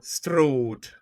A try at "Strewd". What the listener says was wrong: You don't need to roll any R's. Do you need to roll the R's? Strewd.